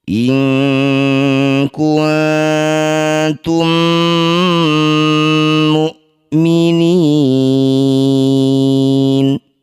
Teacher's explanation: Mim sukun bertemu mim disebut bacaan namanya idgham mimi atau idgham mli. Cara bacanya mim pertama masukkan pada mim kedua kemudian didengungkan dua harakat atau dua ketukan.